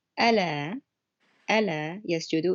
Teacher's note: It's a lighter L sound, and it changes the meaning.